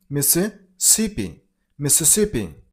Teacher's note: Mississippi. Stress on the third syllable. On sip sound.